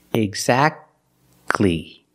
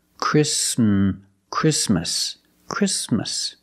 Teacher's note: the t is silent when it's between consonants